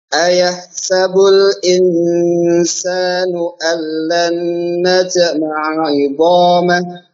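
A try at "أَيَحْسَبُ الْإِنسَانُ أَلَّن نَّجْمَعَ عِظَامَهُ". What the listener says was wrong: sama jimnya juga. Jangan tapi najma'a. Jadi qalqalah sughra, qalqalah yang wasal, jangan diputus suaranya. Najma'a.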